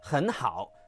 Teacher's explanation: But most of the time, and I mean 90% of the time, you are using the half third tone, 很 好. The 好 doesn't rise, it stays low, half third tone.